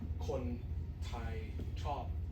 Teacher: you don't really enunciate on the P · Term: Stop finals